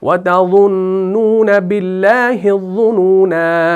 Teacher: अज़ुनूना का जो लफ्ज़ है इसके आखिर में जो अलिफ है ये भी वसल की सूरत में ड्रॉप होता है और वक्फ की सूरत में पढ़ा जाता है